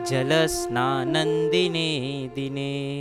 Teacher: अनुस्वार आता है तो वहाँ पे हम म की जगह न का उच्चारण करेंगे